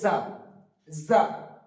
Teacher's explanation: যা বলার সময় আমাদেরকে খেয়াল রাখতে হবে এই যা, যাটা বলার সময় যেন একটা সিটি বেরোয়, সামনের দুই দাঁতের মধ্যে দিয়ে একটা সিটি বেরিয়ে উচ্চারিত হবে যা